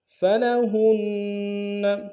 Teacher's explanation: فلہن میں ہا کو نون کے ساتھ ملانا، نون کے اوپر تشدید زور دیں گے